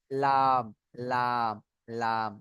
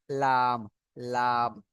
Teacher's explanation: ওই জন্য জিভের আগার কিনারা বলবো এটা আমরা। জিভের আগার কিনারা সামনের উপরে দাঁতের গোড়ার সাথে লাগিয়ে লাম উচ্চারণ হয়।